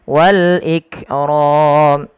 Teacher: ada alif lam qamariyah dibaca dengan jelas lamnya